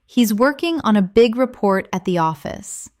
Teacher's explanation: Stress working, big, report, and office. This will help you speak with a natural English cadence instead of sounding too flat or robotic.